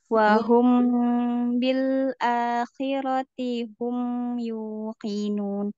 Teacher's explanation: Humnya dialirkan sedikit tuh, Mi. Mimnya ada sifat tawasut ya.